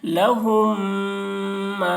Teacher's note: الف مدہ کو ایک الف کے برابر کھینچ کر پڑھیں گے · میم ساکن کے بعد میم آ رہا ہے اس لیے میم کو میم سے ملا کر غنہ کے ساتھ پڑھیں گے، اس کو ادغام شفوی کہتے ہیں.